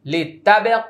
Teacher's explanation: লিতাবে কলকলা লঘু তিন আলিফ টান